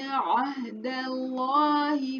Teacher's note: عہد اللہ میں جو لام ہے اللہ کا، اس کو موٹا پڑھیں گے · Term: لام کو موٹا